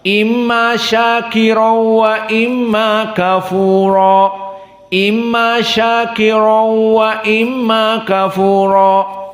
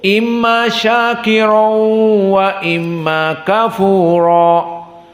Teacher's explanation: qiraah Hamzah dibaca dengan Idgham tanwinnya dimasukkan kepada wau walakin bila gunah maka ini perbedaan dari Idgham bila ghunah Lalu bagaimana dibacanya tanpa · tanwinnya dimasukkan kepada waw, walakin bila gunnah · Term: idgham bila gunnah